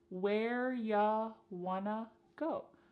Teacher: You becomes y and want to becomes wanna. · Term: reduction